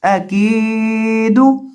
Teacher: کاف کو کھینچ کے پڑھیں گے، ایک الف کے برابر کھینچیں گے